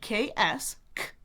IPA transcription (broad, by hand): ks